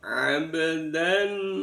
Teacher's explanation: Di sana ada ba sukun di tengah-tengah kalimat, dibaca qalqalah sughra.